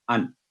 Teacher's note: اسی طرح اب یہاں دیکھیں نون ساکن ہے اور آگے ہے آئین، تو چونکہ آئین حروف ہلکیہ میں سے ہے تو یہاں آواز کو ہم غنہ نہیں کریں گے، لمبی نہیں کریں گے، کلیئر اور 1 سیکنڈ رول یہاں اپلائی ہوگا۔ ان، اظہار کا رول کہتے ہیں اسے، اظہار کا رول یعنی واضح آواز کرنا۔